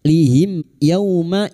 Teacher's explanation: Wa may yuwallihim masuk pada huruf lam yang bertasdid wallihim mim sukun bertemu ya idhar syafawi. Mim sukun dibaca jelas tanpa mendengung.